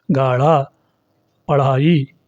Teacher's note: तो इन शब्दों को बोलने में हवा का एक झटका भी बाहर को लगता है। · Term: द्विगुण व्यंजन